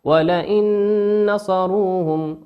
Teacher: وقوله سبحانه وتعالى ولئن نصروهم نون ساكنة في كلمة ولئن أتى بعدها حرف النون، والنون من حروف الإدغام بغنة يغن بمقدار حركة. · والنون في كلمة نصروهم هي نون مشددة تغن بمقدار حركتين.